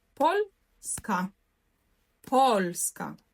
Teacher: акцентує пшет остатньо силабе наголос буде падати на перед останній склад